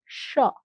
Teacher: তালব্য স যখন বলি তখন আমরা তালু টাচ করে বলি, স। আর যখন দন্ত স বলি তখন দন্ত মানে দাঁত টাচ করে বলি, সা, সা।